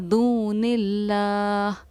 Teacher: دون اللہ میں لفظ اللہ کے لام کو باریک پڑھا ہے، وہ اس لیے کیونکہ لفظ اللہ کے لام سے پہلے اگر زیر ہو تو لفظ اللہ کے لام کو باریک پڑھتے ہیں، اس لیے ہم نے اس کو پڑھا دون اللہ۔